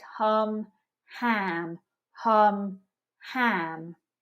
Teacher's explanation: if you see a letter u relax your mouth and if you see an a make a high energy spread sound with the tongue forwards